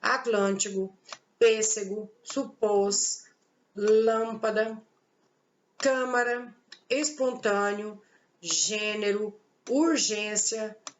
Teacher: o acento circunflexo, ele tem uma pronúncia fechada, ele tem um som mais fechado